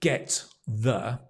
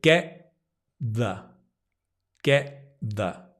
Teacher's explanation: here get and the if I show you get and the the t is in the same place so actually we we connect them right we don't say get the we say getthe getthe can